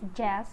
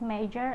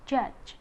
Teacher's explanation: J is voiced alveopalatal affricate, for the initial position is jazz, for the medial is major, and the final is judge.